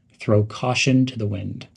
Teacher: link the words throw and caution they're pronounced together quickly